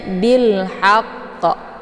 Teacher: karena sesudah alif lam terdapat huruf qamariah yaitu ha cara bacanya Alif lamnya dibunyikan secara jelas atau Alif lamnya tetap dibaca sukun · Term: izhar qamariah